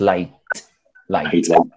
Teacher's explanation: esa pronunciación de esa t debe ser explosiva